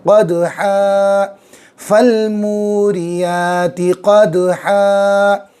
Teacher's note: دو زبر ہے، وقف کریں گے، الف مدہ بن جائے گا